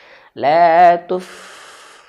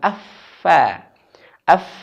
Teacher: Fa bibir bawah nyentuh ujung gigi si atas